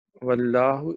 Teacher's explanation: اچھا اس کے بعد واللہ اس میں جو ہے لام جلالہ ہے اور یہ موٹا پڑ جائے گا